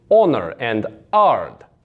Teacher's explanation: the dropped H sound, which is for words like honor and hard would be honor and ard. You just get rid of that H sound.